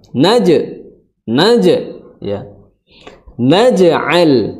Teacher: Kemudian naja ada sifat apa? Memantul, disebut dengan qalqalah